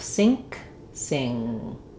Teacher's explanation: If you tell yourself, I'm saying the word sink, your brain, your tongue is going to cooperate and go into that ng position, and then just leave the k off